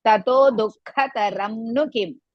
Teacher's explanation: Tato is the first ta is hrasva, second ta dirgha.